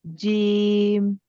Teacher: এই জিমে একটু বেশি টান হবে এটাকে বলে তিন আলিফ টান